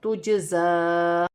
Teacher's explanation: زا پر کھڑی زبر بھی ہے اور چھوٹی مد بھی ہے، مد منفصل. 1 سے 3 الف کی مقدار تک کھینچ کر پڑھا جائے گا. وقف کی صورت میں گرتی نہیں ہے.